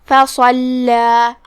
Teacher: کلمت فصلہ میں یہاں حرف الصاد ہے. ہم صاد کو تفخیم سے پڑھیں گے کیونکہ وہ حروف تفخیم میں سے ہے، مطلب بھاری آواز میں.